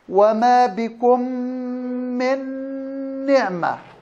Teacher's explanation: الميم مع الميم إضغام متماثلين صغير بغنة.